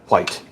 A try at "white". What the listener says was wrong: why are you pronouncing the H?